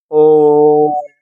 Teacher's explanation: प्लुत स्वर में दीर्घ स्वर से भी ज्यादा समय लगता है